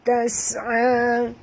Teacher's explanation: bunyikan safir pada sin tas'a.